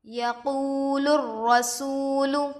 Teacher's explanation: یقول الرسول، یا پر زبر کی حرکت ہے، جلد پڑھیں۔ واو ساکن سے پہلے پیش ہے، واو مدہ ہوگا، تھوڑا کھینچیں اور معروف پڑھیں۔ لام پر پیش کی حرکت ہے، جلد پڑھیں۔